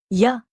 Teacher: Ya is in fact a product of a smooth glide between the two vowels e and a, which is the source of this consonant in all languages, like in Arabic, where ya can both be a consonant or a long vowel.